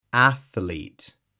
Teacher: 2 syllables. The TH flows directly into the L.